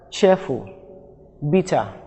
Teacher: two syllable noun nouns that are two syllable nouns and adjective the stress falls on the first syllable